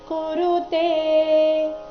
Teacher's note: ಇಲ್ಲಿ ತೆ ಮಾತ್ರ ದೀರ್ಘ ಬರಬೇಕು